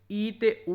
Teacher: ਜੀਭ ਦੀ ਉਚਾਈ ਦੇ ਆਧਾਰ ਤੇ ਉੱਚੇ ਸਵਰ ਨੇ ਜੀ ਈ ਉ ਮਤਲਬ ਕਿ ਇਹਨਾਂ ਨੂੰ ਬੋਲਣ ਵੇਲੇ ਆਵਾਜ਼